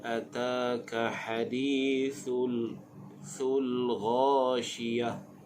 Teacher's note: Huruf gha makhrajnya di bahagian hujung kerongkong. Syiyah bila waqaf pada ta marbutah dibunyikan dengan bunyi ha.